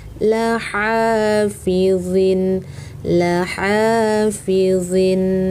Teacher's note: Jangan dibaca laha bukan ha yang besar. Ha kecil, di tengah tenggorokan.